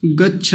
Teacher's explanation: च का में कम बल लगाना पड़ता है भीतर से वायु का वेग कम आता है छक में ज्यादा आता है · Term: अल्प प्राण महाप्राण